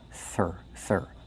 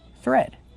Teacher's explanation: We have the TH making the voiceless sound with air, plus the R. Thir. Be careful, not thr, but thread.